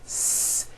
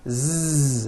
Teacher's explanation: any voicing going on with the sound no the s sound is unvoiced · So S has no voicing. S. Z has voicing. Z. So we say the S sound and the Z sound are also paired consonants.